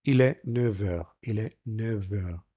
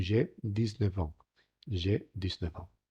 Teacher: En el caso de la F, se sonoriza, pasa a una V.